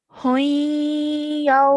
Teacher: with the ya mushaddad and the tanween before that, try and hold that nasal sound a bit longer